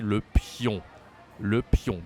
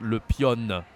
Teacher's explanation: We don't say the N here. It's like on, pion.